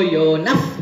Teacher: because विसर्ग बिंदू नंतर प आलो सो प्रोनाउन्सिएशन काय होणार फ